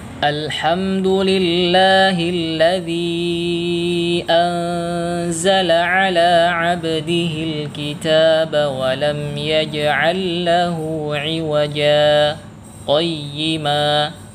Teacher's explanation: Jadi kita berhenti sejenak, kira-kira kurang lebih 2 harokat, kemudian kita sambung tanpa mengambil nafas. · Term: saktah